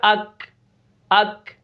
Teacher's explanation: تھوڑی سی آواز نکلے گی, آخر میں سانس جاری رہتا ہے کافی مقدار تک. ہمس میں ضعیف ہونے کی بنا پر آواز پست ہوتی ہے اور سانس کافی مقدار میں جاری رہتا ہے.